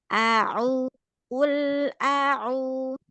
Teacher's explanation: Hamzah fathahnya jadi tidak berubah jadi ain.